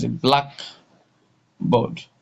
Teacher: So the first one is the blackboard. So the stress from the pronunciation, the stress is on the black.